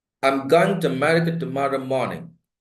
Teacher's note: you can't see any tone any prominence any variation in the pitch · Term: rhythm